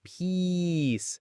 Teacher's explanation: It's that stretched out E sound, peace.